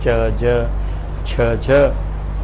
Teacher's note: in Hindi or Nepali being not palatal but pre-palatal, alveopalatal